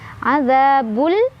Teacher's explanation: Za mad tabi'i karena ada alif sebelumnya ada fathah dibaca panjang 2 harokat. Azabul alif lam qamariyah karena ada alif lam bertemu huruf qamariyah yaitu ha, dibacanya alif lamnya jelas ya.